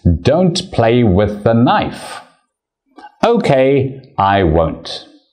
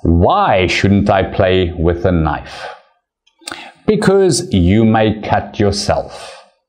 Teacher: at the end of each sentence there is a little down arrow showing that your voice goes down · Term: falling intonation